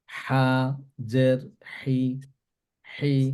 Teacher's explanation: জিমের পরে যে হা টা আছে সেটা থ্রোটের মাঝখান থেকে প্রোনাউন্স হবে